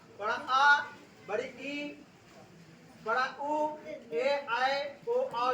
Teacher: इसके उच्चारण में 2 गुना समय लगता है, इसलिए इसे द्विगुण स्वर कहते हैं, 2 गुना समय लगने के कारण। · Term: दीर्घ स्वर